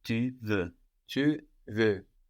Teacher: We have an X on the end. But we don't hear this X because French doesn't tend to pronounce the consonants written on the ends of words